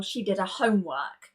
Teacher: the homework, because it's a noun, does need that H sound, but the pronoun her can eliminate the H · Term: elision